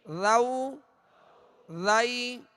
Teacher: تو ذال کا مخرج جو میں نے ابھی عرض کیا کہ سرا زبان، اوپر کے سامنے والے 2 دانتوں کے اندرونی کنارے، اور نرمی کے ساتھ ادا کریں گے